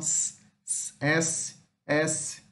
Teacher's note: Temos aqui a alveolar fricativa, o S